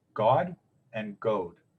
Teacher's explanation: our word for god and their and our word for good in old english are distinguished entirely by the length of the o god short is the uh the deity and god long is